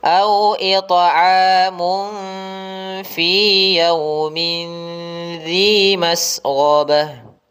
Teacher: Karena fa itu huruf ikhfa, di sini ikhfa hakiki, maka kita samarkan atau kita dengungkan